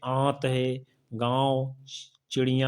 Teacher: नाक से बहुत कम सांस निकलती है और मुख से अधिक निकल चलती है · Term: अनुनासिक